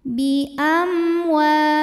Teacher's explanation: ada mim sukun yang menghadapi huruf selain mim dan ba di sini hurufnya adalah huruf wau maka mim dibaca dengan jelas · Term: izhar syafawi